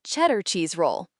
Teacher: The D sound in cheddar was almost silent. It sounded like cheddar cheese roll. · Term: connected speech